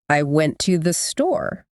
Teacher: the words that carry the main meaning like went and store are usually stressed MH the smaller words like to and the they're unstressed right · So a native speaker might actually say something like, I went to the store. To and the become really quick, almost like one soft sound. Like they get swept away by those more important words.